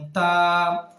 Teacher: তা হরফটি জিহবার আগা সামনের উপরের দুই দাঁতের গোড়ার সঙ্গে লেগে উচ্চারিত হবে · জিহ্বার আগা সামনের উপরের 2 দাঁতের গোড়ার সঙ্গে লেগে উচ্চারিত হবে, যেমন তা। হ্যাঁ, জিহ্বার আগা সামনের উপরের 2 দাঁতের আগার সঙ্গে উচ্চারিত হবে।